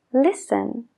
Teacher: la t en Listen no la oímos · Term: empty letters